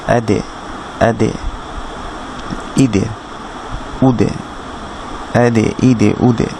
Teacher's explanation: দাল সাকিন কলকলা হয়